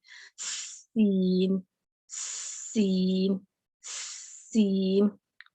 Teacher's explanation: سین پہلے سیٹی کی آواز لے کے آنی ہے، وہیں سے آپ نے اس کو سٹارٹ لینا ہے، پھر اس حرف کو ادا کرنا ہے.